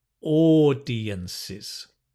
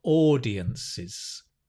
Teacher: Not ow, but or, like O-R.